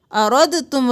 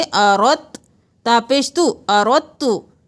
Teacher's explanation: आयत नंबर 20 में देख लीजिए, यहाँ पर हम इक़लाब करेंगे, रॉ को ता के साथ मिलाएंगे, दाल को नहीं पढ़ेंगे , हमजा ज़बर आ, रॉ ज़बर ता, रत, अरद तुम नहीं